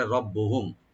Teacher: রব্বুহুম রটাকে একটু আমরা ডিপ করে পড়বো, আর তাকে এখানে জাহার করবো